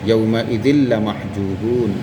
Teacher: تنوین کے بعد حروف جر ملون میں سے لام آ جائے تو لام کی صورت میں بغیر غنہ کے ملا کر پڑھیں گے